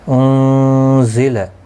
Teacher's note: انزل نون ساکن کے بعد حروف اقفا کا زا ہے، اقفا حقیقی ہوگا